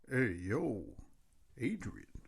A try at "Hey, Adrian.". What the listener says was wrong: I think your Adrian was a little too clear, though. You kind of have to... Not... you can't, specifically pronounce every letter. Kind of slur it together. Adrian.